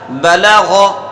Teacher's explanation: یہ پہلے دو حرف باریک ہیں، اور آخر کا حرف جو ہے یہ حروف مستعلیہ میں سے پورا ہے، اسے پر کر کے پڑھیں گے